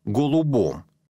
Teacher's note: в корне пишется буква о произносится а произношение имеет свои законы о письмо свои правила это путает людей